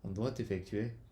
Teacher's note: On prononce le T de doigt avant le E de effectuer. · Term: liaison